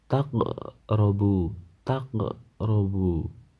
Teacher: Huruf qaf berharakat sukun di tengah kalimat. Cara membacanya yaitu huruf qaf dibaca memantul ringan. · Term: qalqalah sughra